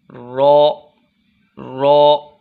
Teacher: ज़ुबान के अगले हिस्से का किनारा ऊपर के 4 दांतों के साथ लगाकर रॉ अदा होता है।